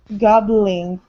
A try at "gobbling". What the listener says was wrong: There you go. Good.